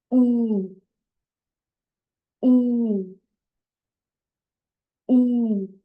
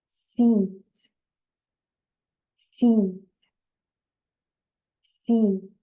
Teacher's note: when you say E, you stretch out your lips a little more, and it's a long sound